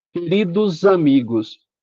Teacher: como um S entre duas vogais normalmente tem som de Z